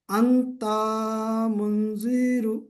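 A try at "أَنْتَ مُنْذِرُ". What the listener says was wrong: তা টান নেই, আর রাও কোথাও টান নেই, শুধু গুন্না আছে। আনতামুন। জি, এবারে ইজরাটা করুন। মেন ইজরাটা নুন সাকিনের পরে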